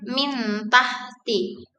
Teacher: dalam ikhfa bunyi nun tidak dihilangkan sepenuhnya, namun diucapkan dengan samar dan sedikit nasal. Transisi ke huruf berikutnya menjadi lebih halus karena nun disamarkan.